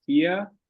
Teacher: aqui a gente tem então o v com som de F fia e esse r no fim puxando pro a de novo